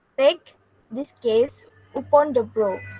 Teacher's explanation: The first line has 4 feet or is also called a tetrameter, which starts with stressed and then continues without stress. This means the first line is trochy tetrameter.